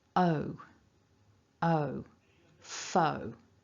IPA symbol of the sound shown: əʊ